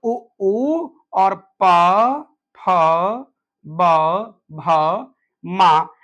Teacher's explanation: उ ऊ प फ ब भ म इनका उच्चारण ओठ से होता है। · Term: ओष्ठ